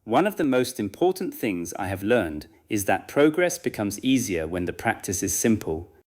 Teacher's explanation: You may use a very light pause after learned, but avoid breaking the internal phrases.